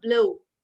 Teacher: b is a plosive, but l is a continuant. So when you mix up the plosive with a softer sound, it cuts down the harshness and it makes it more fluid.